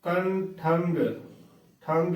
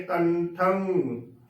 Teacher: ਨੇ ਗਗਾ ਲਗਾ ਦਿੰਦੀਆਂ ਨੇੋ ਬਿਲਕੁਲ ਹੀ ਗਲਤ ਉਚਾਰਨ ਬਣਦਾ ਹੈ ਗਗ ਦੀ ਵਰਤੋ ਬਿਲਕੁਲ ਵੀ ਨਹੀਂ ਕਰਨੀ ਟਿਪੀ ਦੇ ਉਚਾਰਨ ਦੇ ਵਿੱਚ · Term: ਸ਼ੁੱਧ ਉਚਾਰਨ